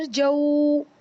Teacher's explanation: वाव साकिन से पहले ज़बर है तो वाव लीन है, ये भी जल्दी पढ़ा जाएगा